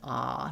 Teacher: my whole tongue is down and it's all open. A nice and open. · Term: A vowel